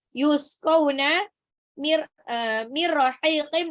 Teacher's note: nun sukun ketemu ra, langsung dilebur aja. Idgham bila guna tanpa ditahan. Rahiqin, haknya matabi'i 2 harokat.